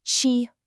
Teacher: the tone here is the first tone. That's the easiest one. It's just high and flat. No ups, no downs, just chi. Let's try it.